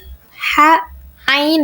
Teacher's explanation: Ada yang keluar dari tengah tenggorokan yaitu ha dan ain.